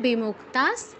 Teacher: বিসর্গ স্থলে পরবর্তী শব্দের প্রথম অক্ষর দন্তস থাকায় দন্তস হসন্তর মত উচ্চারণ হচ্ছে